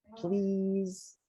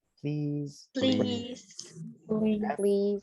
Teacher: and then the s is vibrated so we say please